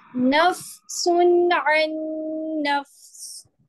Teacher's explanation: سین نہیں ہوگا, وقت کریں گے نا تو سکون آ جائے گا سین کے اوپر, تنوین ہٹ جائے گی